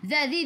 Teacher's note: hujung lidah keluar pada gigi depan. Zi 2 harakat ada ya mad asli.